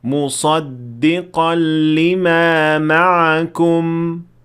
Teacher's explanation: وَآمِنُوا بِمَا أَنزَلْتُ مُصَدِّقًا لِمَا مَعَكُمْ، ایسی صورت میں درست یہ ہے کہ ہونٹ بند ہو جائیں اور سکوت قائم ہو، کوئی قلقلہ نہیں، یعنی جب آپ میم ساکنہ پر رکیں گے تو ہونٹ بند ہونے چاہیے